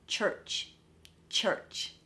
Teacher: the sound is kind of forward in your mouth so rather than the sounds sitting at the back of your mouth like in an R type of sound this is all forward